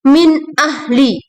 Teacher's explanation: nun mati bertemu dengan alif fathah Hamzah dibaca dengan idhar halqi atau jelas